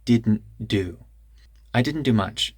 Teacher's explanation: There's kind of a glottal stop after the N.